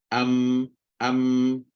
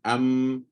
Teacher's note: bibir tertutup tapi terkeluar ikut hidung keluar hidung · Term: mim